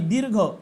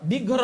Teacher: र चा उच्चार हा आधी होतोय आणि त्याच्यानंतर घ चा उच्चार होत आहेघर दिघर अस म्हणता का दीर्घ म्हणाव लागते म्हणजे रफारा